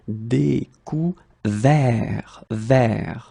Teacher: that final T is not pronounced and the sound is quite open here